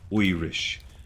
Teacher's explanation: instead of I sounds, you make oi sound, like Irish. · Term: Irish accent